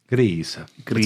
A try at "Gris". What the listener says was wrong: It's pronounced Gree. No, Gree. No S.